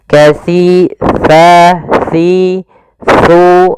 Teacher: Untuk menyempurnakan makhraj daripada huruf sa, kita harus mengetahui posisinya dulu, tempat keluar hurufnya, yaitu ada di mana ujung lidah kita menempel dengan gigi seri atas